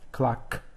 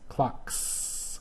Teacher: clock and that's unvoiced clocks so it goes in the S column